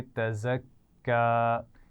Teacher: اس میں سیٹی کی آواز ہونی چاہیے اور کاف پر شد ہے تو اس کو سختی سے پڑھیں گے